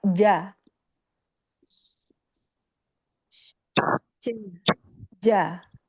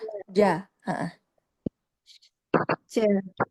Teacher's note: Hati-hati jimnya tidak terkecap ca-ca-ca ya di tengah tenggorokan